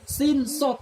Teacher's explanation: Contohnya sin dan sod. Sin dan sod itu lidahnya sama-sama di depan. Sin, sod sama-sama di depan, nggak berubah lidahnya.